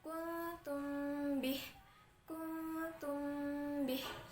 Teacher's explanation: cara membacanya ialah didengungkan di bibir dan dibaca dengan samar-samar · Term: ikhfa syafawi